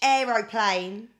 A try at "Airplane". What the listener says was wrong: No, it's Airplane. Airplane. That's how it's spelled. Not Aeroplane, it's Airplane. Airplane. That's how it's spelled.